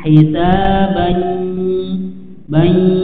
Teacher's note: tidak ditahan dan dia sempurna di mulut, hisabai, tapi diusahakan masuk ke hidung, hisabai bai ya, masuk ke hidung. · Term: idgham bi gunnah